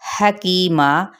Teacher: ہا وسط حلق سے ادا کرنا ہے